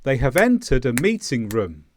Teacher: the room goes down because it's at the end of the sentence but it's still louder it's still loud it's still longer than the grammar words